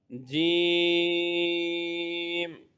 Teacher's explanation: अगला हर्फ जीम इसके ऊपर मद है इसको ज्यादा लंबा करेंगे यह जबान के दरमियान और तालू के दरमियान से अदा होता है